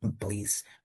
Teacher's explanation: Air comes out quickly without vibration in the vocal cords.